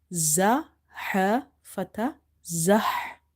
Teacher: this ha, same like ain, is from the middle of the throat